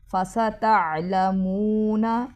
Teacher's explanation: میم کے بعد واو مدہ ہے، لمبا کریں گے